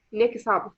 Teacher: pronounce the T because the next word is starting with a vowel.